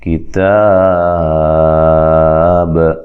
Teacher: با پہ قلقلہ کرنا ہے، با کو ہلانا ہے